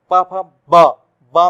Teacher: होठ टच किए बिना हम बोल ही नहीं सकते, वो हमारे होठ वाले प फ ब भ म